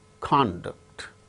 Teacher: The first syllable gains stress when it is used as noun, conduct. When it is used as verb, conduct.